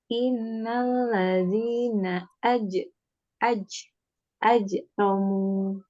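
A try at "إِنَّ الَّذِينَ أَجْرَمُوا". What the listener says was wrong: Dilatih untuk tidak mengeluarkan CH-CH-nya itu ya Mbak.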